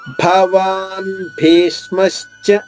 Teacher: 2వ అక్షరం భీ పైన వస్తుంది. భీ పైన ఆఘాతం తీసుకుంటూ ష్మాలోని షా ద్విత్వం చేసుకోవాలి.